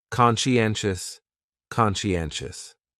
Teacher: the stress is on that third syllable